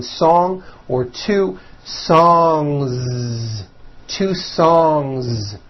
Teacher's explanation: song ends with a voiced n sound so if you make it plural don't forget to add a voiced Z ending